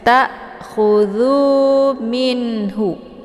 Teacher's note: Hamzah sukun Jadi dibacanya dengan cara ditekan dan bacaannya tipis takudu minhu ada nun sukun menghadapi huruf Ha ini dibacanya jelas